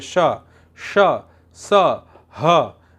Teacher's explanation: इन व्यंजनों का उच्चारण करते समय जो हमारी श्वास है वो मुख से रगड़ खाकर बाहर निकलती है। ऐसा लगता है जैसे ऊष्मा यानी गर्मी पैदा हो रही है, इसलिए इन्हें ऊष्म व्यंजन कह रहे हैं।